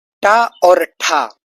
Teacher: टा और ठा दोस्तों आपके मूर्धन्य प्रकार के व्यंजन है